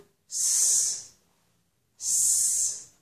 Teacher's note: if I make the sound s, there's no vibration. S, my vocal cords do not vibrate.